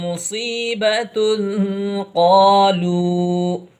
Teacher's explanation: یہاں پر اخفا ہوگا کیونکہ تنوین کے بعد اخفا کے 15 حروف میں سے قاف آیا ہوا ہے